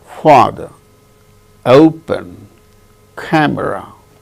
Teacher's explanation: In the case of all these three words, the first syllable is stressed.